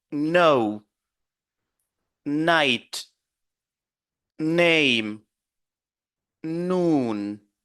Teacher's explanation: la langue va toucher le palais et le son va sortir par les narine